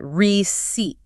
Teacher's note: The emphasis is heavy on the second syllable. The first part is a soft re. The c sounds exactly like an s. And the ei combination stretches out into a long e sound.